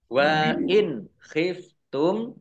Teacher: nun sukun bertemu dengan huruf kha, bacaan idhar dibaca jelas.